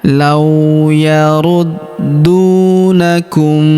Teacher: Lau huruf la kita ayun sekali dengan lembut karena terdapat wau sukun di depannya.